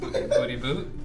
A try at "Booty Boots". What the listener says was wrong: The S is not silent, it's Booty Boots.